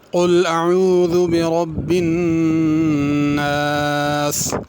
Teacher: اس میں قل میں بڑا قاف ہے، اس کو پر کر کے پڑھنا ہے، کل چھوٹے قاف کے ساتھ نہیں پڑھنا